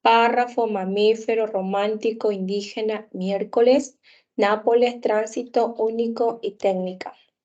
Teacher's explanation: Son aquellas palabras que llevan la mayor fuerza de voz en la antepenúltima sílaba y a todas pues se les coloca la tilde. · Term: palabras esdrújulas